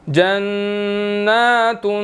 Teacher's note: اور اسی طرح صالحات لہم جنات تجری، اب یہاں پر نون مشدد ہے، یہاں پر اس کے اوپر کھڑی زبر بھی ہے، 1 سیکنڈ لمبا کرنا ہے اور غنہ بھی کرنا ہے